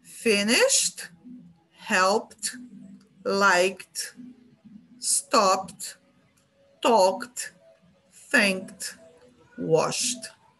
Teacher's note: Esses sons de sh, P, K, o próprio som do P, stop, são sons voiceless sounds. E para esses, o som final do verbo regular vai ser T. Vai ser um t, t.